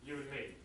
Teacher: in many cases we just pronounce n instead of and